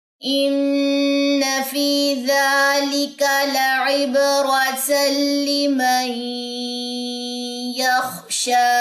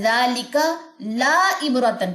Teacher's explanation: لا کی زبر کو لمبا نہیں کرنا